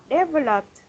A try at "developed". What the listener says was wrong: Developed. For here, you got the ending sound, but just the intonation.